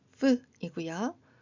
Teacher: F는 흔히 P처럼 발음하는데 그것이 아니라 윗니로 아랫입술에 가볍게 대고 바람을 내보내는 소리입니다